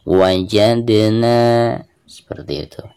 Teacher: huruf dal ketika sukun maka dihukumi qalqalah, dan cara membacanya harus ada pantulannya